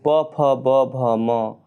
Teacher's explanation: अक्षरों के उच्चारण में दोनों ओष्ठों का प्रयोग होता है